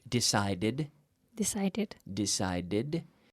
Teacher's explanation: the tongue stays back behind my teeth touching the roof of my mouth but not touching the teeth at any time with that D sound